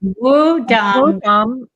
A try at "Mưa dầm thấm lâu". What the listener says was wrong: So the Z, the D you pronounce like a Z.